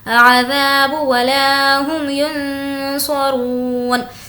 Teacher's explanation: ذا کو کھینچیں گے کیونکہ الف مدہ ہے